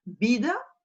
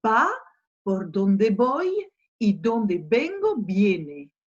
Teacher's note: Alors le V, on en a plusieurs, on en a un dans le titre, vida, on en a plein dans le deuxième couplet, va, por donde voy y donde vengo viene. Donc vous avez bien entendu, le V va se prononcer comme un B.